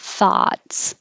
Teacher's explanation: the vowel is ah like hot so you have to open a lot